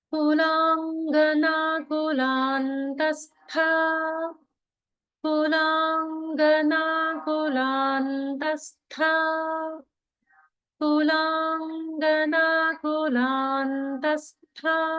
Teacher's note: the n sound is separate from the ta in kulantastha. · But there is still holding, even though it's a nasal. The ng sound is separate from the following ga in kulangana.